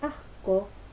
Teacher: en asco sí aparece la dorsovelar porque se ubica o se coarticula después de la vocal A, que también lo es.